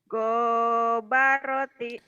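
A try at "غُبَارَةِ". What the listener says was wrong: Gonya pendek. Gobaroti. Gobaroti. Gobaroti. Gobaroti.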